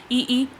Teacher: तालव्य, तालव्य यानी कि तालु से जो बोले जाते हैं, तो ई जब करोगे ई तो हमें ध्यान, हम बोल के देख रहे हैं तो हमारी जो जीभ है बिल्कुल बिल्कुल तालु से बिल्कुल सटके रहती है। ई जीभ को उठाकर बोला ही नहीं जाएगा, है ना।